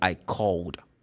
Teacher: if you vibrate the vocal cords, if the last sound is voiced, so then you have to produce the sound of d.